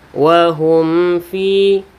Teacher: wahum fiha kholidun dibaca jelas tanpa adanya berdengung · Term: izhar syafawi